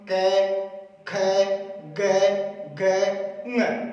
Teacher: कै वर्ग बोला जाता है कंठे से, यानी कंठे कह दो या कोमल तालव्य कह दो, कोमल तालव्य। ये कोमल तालव्य कै वर्ग का उच्चारण स्थान है कंठे या कोमल तालव्य।